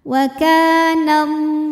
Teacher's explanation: Alif didahului baris fathah maka huruf Kaf panjang dua harakat waakanallah lam pada lafaz Allah atau lam jalalah dibunyikan secara tafkhim karena huruf sebelumnya berbaris fathah maka dibacanya tebal